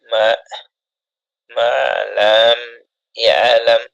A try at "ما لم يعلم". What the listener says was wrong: টান হবে না তো لم يعلم ما لم يعلم